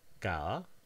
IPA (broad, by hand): kaða